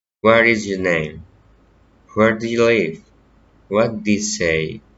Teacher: Friendly interest, politeness, rising intonation.